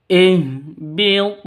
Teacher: ha ini keluarnya dari tenggorokan paling bawah